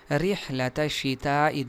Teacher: اس را کو باریک اس لیے پڑھا جائے گا کہ اس کے نیچے زیر ہے. رحلۃ الشتاء یہ ہا ہے، خا اور ہا نہیں.